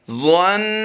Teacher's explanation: ضا کو پر کرنا ہے. نون پر غنہ کرنا ہے.